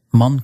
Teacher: N before a K will turn into that back N